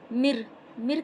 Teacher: نون ساکن کی آواز را میں مل کے سائلنٹ ہو گئی، مر کہیں گے۔